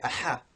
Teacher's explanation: by a constriction of the throat so the muscles that we use for swallowing they they actually tense up and it makes the throat um constrict slightly which results in the air rushing out much quicker than it